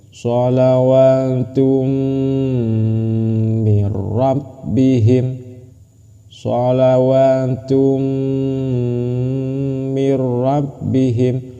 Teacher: Masuk dengan cara berdengung ketika tanwin mau masuk ke mim. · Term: idgham bi gunnah